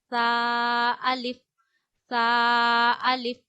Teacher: सा अदा होता है हमारे ऊपर वाले दांतों के अंदरूनी किनारे पे जबान का सिरा लगाने से